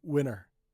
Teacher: Many people just don't pronounce the T at all.